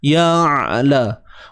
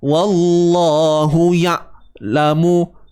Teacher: Hu baris depan hu macam biasa. Ya, matikan ain, jangan tahan suara, lepaskan sikit.